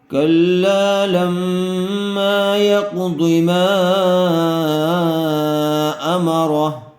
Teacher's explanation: لما یہاں پر بھی میم میں الف مدہ ہوگا۔ ما امر، حرف مدہ کے بعد دوسرے کلمے میں حمزہ آیا ہوا ہے، اس لیے مد منفصل کا قاعدہ ہوگا، میم کو تھوڑا کھینچ کر پڑھیں گے۔